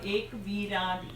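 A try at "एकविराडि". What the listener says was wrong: Eka. In Hindi you say ek. This is Sanskrit. Eka. Eka.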